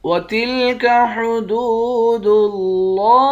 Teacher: دال کو واو کے ساتھ ملا کر واو کو ایک الف کی مقدار کھینچیں گے